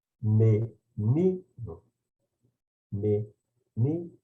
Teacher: o O soa como o U e ele é pronunciado mais fracamente